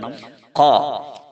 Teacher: നാവിന്റെ അങ്ങേ അറ്റം മേലെ അണ്ണാക്കിനോട് ചേർത്തുകൊണ്ടാണ് ഖ പറയുന്നത്. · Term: ഖാഫ്